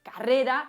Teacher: una reducción de diptongos decrecientes